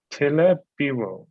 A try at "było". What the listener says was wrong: No, you're saying biło, and biło means beat, like to beat someone. So you want to say było.